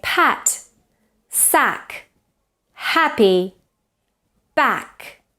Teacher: notice it's a very spread vowel ah ah it's it's different to Spanish vowel ah in Spanish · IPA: /æ/